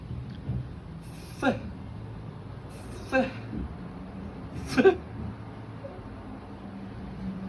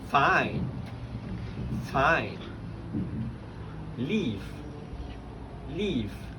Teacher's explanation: labiodental fricative, which is the teeth on your lips.